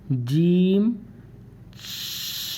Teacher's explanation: جیم کا مخرج زبان کی نوک، وسط زبان اس کے مقابل اوپر کا تالو